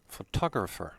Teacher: the stress is on the second o and t is pronounced t